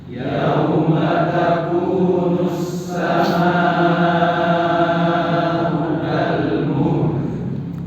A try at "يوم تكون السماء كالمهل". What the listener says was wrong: Tidak langsung muhl كالمهل. Nah. يوم تكون السماء كالمهل.